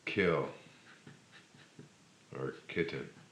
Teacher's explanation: one you make a seal at the back of your throat your tongue just rises up and it closes off the back of your throat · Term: K sound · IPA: /k/